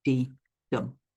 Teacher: And those 2 syllables go dee-dum. Okay, your stress is on the second syllable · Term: iamb